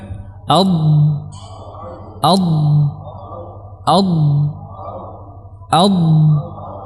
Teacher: ke depan sedikit karena dorongan dari belakang lidah yang kuat sehingga ujung lidah ini menyentuh pangkal gigi seri tidak sampai kepada ujung gigi seri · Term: huruf dad